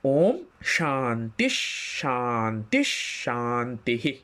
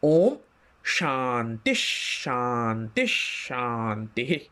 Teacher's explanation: তাহলে প্রথম এবং দ্বিতীয় শান্তির মধ্যে ওই ঘটনাটি ঘটবে, বিসর্গের পরে তালব্যশ শুরু হচ্ছে বলে তালব্যশ হসন্ত হবে বিসর্গের জায়গায়